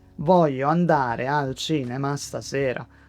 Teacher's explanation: English has a rhythm where some words are very strong and many small words become weak. Italian is more even. Not robotic, not flat, but clearer from syllable to syllable. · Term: every syllable needs a little space